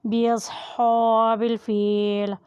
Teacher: فا کے نیچے زیر ہے اور ساتھ یا ہے اس لیے اسے بھی مد کریں یعنی کھینچ کر ادا کریں۔